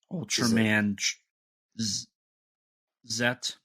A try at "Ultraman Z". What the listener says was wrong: It's spelled Ultraman, Z, but it's pronounced Zed.